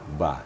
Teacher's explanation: Kalau ba, makhrajnya adalah pada bibir bagian dalam.